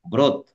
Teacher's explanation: শব্দের শুরুতে যদি রফলার সাথে অ থাকে তাহলে ওই অটাও ও হয়ে যায়